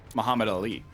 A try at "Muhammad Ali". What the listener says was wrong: Muhammad Ali. You're going right through the syllables as if there's never a break between them.